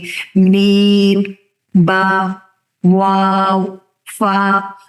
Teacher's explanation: تو یہ چاروں وہ حرف ہیں جو ہونٹوں سے ادا ہوتے ہیں